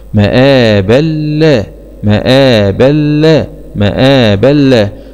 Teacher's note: باء فتحتين مع الإدغام من غير غنة في اللام المشددة مع الفتح لأن اللام من حروف كلمة رل